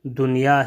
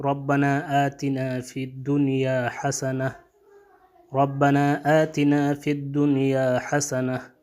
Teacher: جب بھی حروف یرملون اور نون ساکنہ اگر ایک ہی کلمے میں آ جائے تو اس وقت یہاں پہ ادغام نہیں ہوگا بلکہ اظہار ہوگا